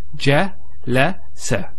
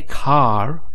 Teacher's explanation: notice we don't elongate. There's no elongation of the a sound. So we don't say a.